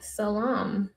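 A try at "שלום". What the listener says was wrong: It has an H, creative. Shalom.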